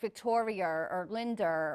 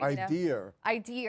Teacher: the speaker on some level knows that they drop the r and so put it back where it doesn't belong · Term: intrusive r